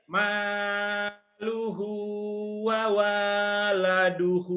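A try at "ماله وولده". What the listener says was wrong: Wawanya pendek kan gak ada yang manjangin.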